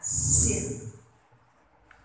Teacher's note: Sin itu adalah harfu rakhawatin wa hamsin, huruf yang punya ucapan rohawa, tegas kalau kita ucapkan, tapi ada hamesnya, ada desisnya, sin. Kita nggak menutup gigi kita secara ekstrim kalau mengucapkan sin, nggak boleh.